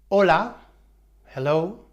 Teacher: in Spanish the letter H is silent or mute that means it has no sound